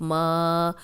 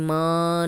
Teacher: ناک میں آواز آپ نے نہیں لے کے جانی